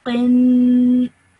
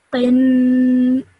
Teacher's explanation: I need to stretch that nasal sound out for 2 seconds. So I would say this as qin.